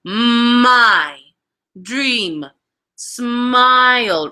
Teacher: the sound is made by closing both lips and allowing the sound to travel through the nasal passages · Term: bilabial nasal